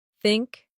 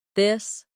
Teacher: The tongue comes gently between the teeth. For think it's soft. For this it's voiced.